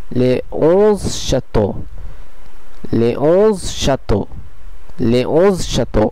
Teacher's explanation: এখানে আপনারা নিশ্চয়ই খেয়াল করলেন যে এখানে একটি ভাওয়েল ও থাকার ফলেও এসটি ও এর সঙ্গে সংযুক্ত হলো না, বরং এটি আলাদা একটি শব্দেই থেকে গেল, আর এস কনসোনেন্টটি সাইলেন্ট থাকলো